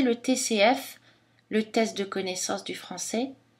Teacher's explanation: on utilise un peu comme une parenthèse dans une phrase souvent elle est précédée d'une intonation montante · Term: intonation plate